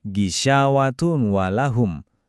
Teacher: Bunyi N-nya hilang digantikan dengungan yang menyatu. · Kita nggak baca gisyawatun walahum, tapi tanwin un itu melebur ke huruf waw menjadi tua wa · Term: gunnah